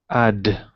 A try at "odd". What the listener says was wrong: So not add. Okay, so we don't want to go wide. We want to go open, drop the jaw down.